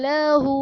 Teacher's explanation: لہو میں ہا پر الٹا پیش ہے، الٹا پیش جو کہ واو مدہ کے قائم مقام ہے، اس لیے اسے ایک الف یعنی دو حرکات کے برابر کھینچ کر پڑھیں گے۔